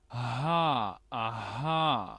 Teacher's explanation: Es parecida a la J nuestra, es una H glotal, se le llama este, o gutural, y pues más o menos están en la misma zona, digamos, de gesticulación.